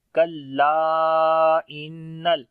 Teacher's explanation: علم الانسان ما لم یعلم کلا ان الانسان لا یطغی. کلا، لام کو لمبا کریں گے، الف مدہ ہے اور یہاں پر مد منفصل بھی ہے، حمزہ آ رہا ہے اگلے ورڈ کے شروع میں. · نون کے اوپر شد ہے، غنہ کریں گے